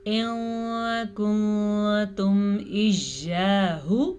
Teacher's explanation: نون ساکن کے بعد کاف آیا ہے حروف اخفا میں سے